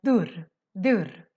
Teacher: What is very special with the Stockholm accent is that sometimes or most situations when we have an Ö with two consonants after, we make the Ö short, but it can also turn more to a U sound. So if we have the word, for example, dörr, which means door, in Stockholm we have a tendency to pronounce this more as dörr, dörr.